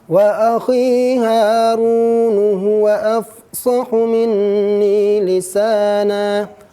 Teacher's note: Jangan sampai kita melebihkan kadar panjang madnya seperti dalam kalimat wa akhi Harun huwa afsahu minni lisana. Akhi mad tabi'i ya, ha mad tabi'i alif, ru mad tabi'i waw. Ini harus seragam bunyinya.